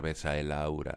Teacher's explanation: la siguiente palabra empieza por vocal o h muda y entonces pronunciamos esas dos sílabas como una única sílaba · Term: sinalefa